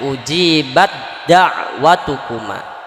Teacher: Jadi melebur huruf yang pertama ke huruf yang kedua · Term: idgham mutajanisain